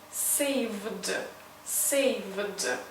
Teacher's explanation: Since v is a voiced consonant, we need to pronounce d. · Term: d sound